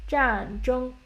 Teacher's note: keep it high and flat a little bit keep it constant a little bit